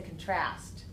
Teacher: we move the stress over to the second syllable